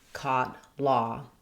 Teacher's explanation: Let's look at how to pronounce vowel ah, as in caught, law. It's almost as open as the ah vowel, but it has some lip rounding. So the ah is like an ah with lip rounding.